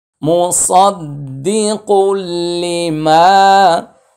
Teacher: তানউইনের পরে লাম ইদগামি বিলা গুন্না, আর জবরের বাম পাশে খালি আলিফ, এক আলিফ টান।